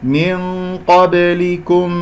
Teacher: باء مقلقلة قلقلة صغرى في وسط الكلام